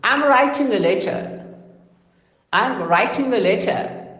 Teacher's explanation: So here the stress is only pertaining to I, and then writing, then a letter.